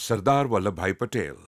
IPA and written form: səɾd̪aːɾ ʋəlləbʰbʰai pʌʈeːl (Sardar Patel)